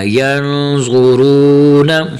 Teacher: یہاں ضا اور را کو موٹا کرنا